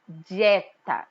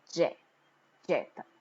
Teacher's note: no momento que você fala dieta você não tem só o som do d e do I você tem um som como se fosse um je